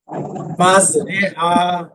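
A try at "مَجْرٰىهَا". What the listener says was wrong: হ্যাঁ, রে টান দেন একটু আবার। রে টান হবে তো, এই যে দুইজনে পড়লো, একটু খেয়াল করলেন না?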